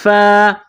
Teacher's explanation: فا کے اوپر کڑا زبر ایک الف کے برابر کھینچ کر پڑھیں گے۔